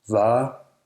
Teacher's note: The letter V is also pronounced as an approximant, not usually a fricative.